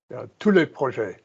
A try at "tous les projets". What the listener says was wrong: That's lovely.